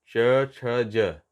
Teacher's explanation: जब ज का उच्चारण करते हैं तो हमारा जीभ का अगला भाग तालु से स्पर्श करता है। तो ये तालु से स्पर्श इसलिए तालु भी बोला जाता है, च छ ज।